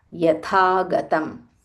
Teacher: This tha is Mahaprana.